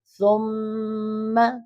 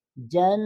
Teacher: نون اور میم مشدد پر غنہ ہوتا ہے، ٹھیک ہے۔ جب بھی نون کے اوپر شد آ جائے یا پھر میم کے اوپر شد آ جائے، وہاں پر آپ ہمیشہ غنہ کریں گے۔